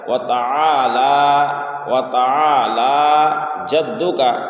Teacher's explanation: لام میں کھڑا زبر ہے تو کھڑا زبر کو ایک الف کے برابر کھینچ کر پڑھا جاتا ہے